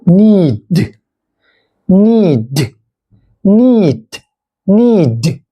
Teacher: แต่ตัวดึเส้นเสียงสั่นนะครับ ใครที่เคยเรียน ก็จะน่าจะผ่านมาแล้วก็เคยฝึกฝนมาก็จะเข้าใจนะฮะระหว่างtกับdนะฮะตัวนี้ตัวเนแล้วก็eก็เป็นนีปิดท้ายด้วยตัวดีนะครับเส้นเสียงซันก็เป็นneedดนะฮะneedดNeedneedneedneedneedneedแปลว่า